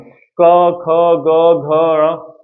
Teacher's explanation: अब यहां देखते जाना, उच्चारण के आधार पर, उच्चारण के आधार पर देखा जाए तो क वर्ग वाले जो व्यंजन आएंगे ना, वो कंठय आ जाएंगे। कंठय यानी जिनसे कंठ से ध्वनि निकलेगी वो कंठय कहलाएंगे।